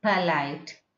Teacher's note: you have to spread your lips like polite, not polite. You should not make it round.